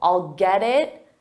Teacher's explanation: we have a T and it's between 2 vowels, so we'll pronounce that T as a soft D